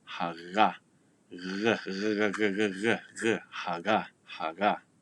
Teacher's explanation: that G sound is what's known as a fricative. So when the flow of air coming from your lungs is going out through your lungs into your mouth, it's a constant airflow.